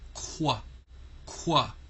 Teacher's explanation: So whenever you see QU, it's going to represent qua, qua, which actually is the K sound and the W sound combined